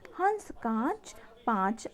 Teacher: अनुनासिक में हवा मुख और नाक दोनों से निकलती है